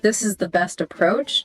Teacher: that slight fall on approach makes it stronger. So it's like a subtle way of saying, I'm sure about this.